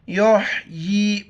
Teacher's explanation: बाज़ पढ़ इसको योजी, बिल्कुल गलत। युहयी कड़ी ज़ेर है, नीचे की तरफ एक अलिफ मिकदार खींचना है। या हा पे युह, या कड़ी ज़ेर यी, युहयी।